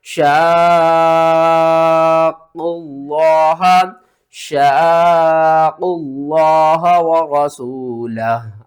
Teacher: اور اس سے پہلے آپ دیکھیں تو یہاں پر جو ہے مد یہ ہے مد لازم کلمی مثقل، اس کو آپ نے 5 یا 6 الف کے برابر کھینچ کر پڑھنا ہے.